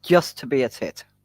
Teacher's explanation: It's not a D. It's just a very flicked T. It happens with the tip of the tongue.